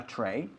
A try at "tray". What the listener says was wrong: No. Tray. Sin K al final.